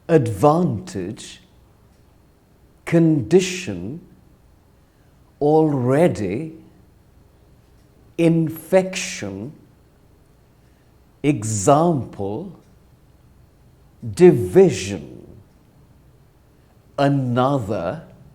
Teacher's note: now listen to these words the stress falls after the first syllable